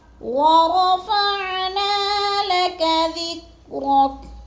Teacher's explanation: را کو پر کر کے پڑھنا ہے اور نا کو بھی تھوڑا سا ہم نے لمبا کرنا ہے